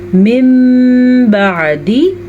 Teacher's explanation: نون ساکن کے بعد با آیا تو نون ساکن میم میں بدل گیا